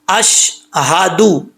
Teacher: तो कैसे पढ़ेंगे, अशहदु, इसको अशहदु नहीं पढ़ेंगे, दाल के ऊपर पेश है, दाल पेश दू होता है, दो नहीं होता, अशहदु, ہادو اللہ الہ.